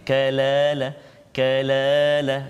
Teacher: Dia tak terangkat pangkal lidah kita. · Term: istifal